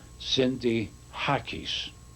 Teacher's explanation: when you pronounce our name in Greek, it's pronounced with an emphasis on the second last syllable